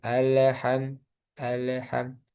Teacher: ada kesalahan ee di lam yaitu memantul